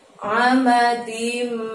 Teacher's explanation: Ada mim di depannya, tanwin bertemu mim, idgham biguna, maka harus dengung selama 2 ketukan ya.